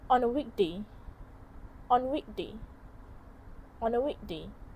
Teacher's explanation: The schwa sound is dropped in on a weekday. This weak form is often reduced in natural speech. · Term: elision